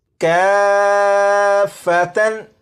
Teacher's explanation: مد لازم کو 3 الف کی مقدار تک کھینچ کر پڑھیں گے